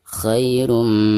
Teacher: huruf idgham di sini huruf mim dan termasuk Idgham Bighunnah maka cara membaca tanwin yang ada di atas roh tersebut itu harus dimasukkan langsung ke huruf mim yang ada di depannya disertai dengan guna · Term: idgham bigunah